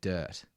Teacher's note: there's no r on the sound